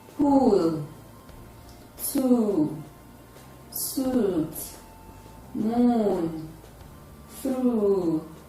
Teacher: also produced at the back of the mouth with rounded lips it is tense because it requires much muscular effort · It is tense because it requires much muscular effort. It is a back, tense, close, rounded sound, and its spellings include double O, OU, EW, IEW, EU, UO, and UI. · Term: long vowel sound